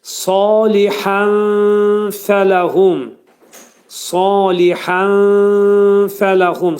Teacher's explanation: İxva demək nun səsinin 1/3 fənin məxrəcində gizlədiləcək. Burada fənin məxrəci yuxarı üst dişlə alt dodağın arasında olacaq. Nun hərfi də, bax, nun səsi də bu fədə gizlədiləcək.